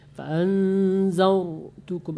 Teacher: Fa'anzartukum, agak bulat mulut itu. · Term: tebal